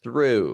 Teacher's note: I don't do the I before the U sound. I skip the I and I go straight to the U.